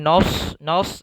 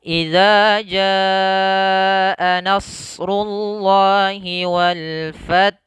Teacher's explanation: Na itu sifatnya tipis ketika bertemu dengan shad yang sifatnya isti'la